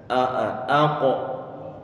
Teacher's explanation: Pangkal lidah dia naik ke atas, nempel ke langit, menempel ke tenggorokan bagian atas. Aqo. Coba huruf qaf dia huruf yang punya sifat isti'la, pangkal lidah dia naik ke atas sehingga nanti ada karakter tebal di sana ataupun tafkhim.